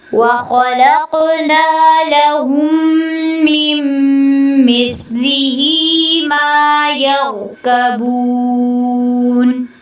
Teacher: وَخَلَقْنَا لَهُم میں میم ساکن کے بعد میم مشدد ہے تو آپ نے یہاں پر غنہ کرنا ہے